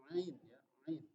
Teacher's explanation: Ain itu juga tenggorokan sebelah tengah.